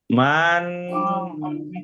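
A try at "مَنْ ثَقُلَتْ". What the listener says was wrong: বলছিলেন মান সাকুলাত, এটা বললে তো গোপন হলো না, ভিতর থেকে হবে, নাকের ভিতর থেকে। মান সাকুলাত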